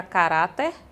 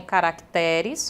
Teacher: Observação a esta regra é a palavra caráter, que faz plural em caracteres, com mudança de acentuação tônica